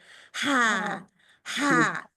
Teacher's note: पूरा आपके हल के दरमियान से जोर लगता है। रगड़ के निकलती है।